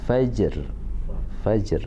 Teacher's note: Matikan huruf ja bunyi huruf qalqalahnya kemudian diikuti dengan huruf ro dengan suara yang rendah